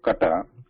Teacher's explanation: K in the English pronunciation has somewhat more breath in it, more air in it, whereas this should not have high air in it. So it is still from the throat.